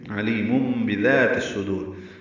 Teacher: تنوین کے بعد با آنے کی وجہ سے علیم یہ اقلاب ہو رہا ہے، نون کی آواز کو میم میں بدل رہے ہیں، اس لیے اس کو ابدال بھی کہتے ہیں. · دال نرمی سے ادا کریں گے، دال الف مدہ ہے، تا کو صاد سے ملائیں گے، ادغام شمسی ہوگا، الف لام نہیں پڑھیں گے، صاد پر پڑھیں گے، دال کو لمبا کریں گے اور را ساکن وقفاً پر پڑھی جائے گی.